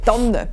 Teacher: Im westlichen Mittelland, der Zentralschweiz und im Wallis sagt man eine Tanne mit einem langen N.